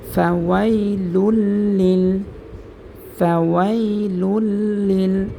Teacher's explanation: তো আমরা এখানে দেখতে পাচ্ছি কিন্তু তানবিনের বামে 2 পেশ, তানবিনের বামে লাম আসছে, ঈদগামে বেলাগুন্না হরফ এবং লামের উপরে তাসদিদ হয়েছে, সেজন্য এখানে আমরা গুন্না ছাড়া মিলাই পড়ব।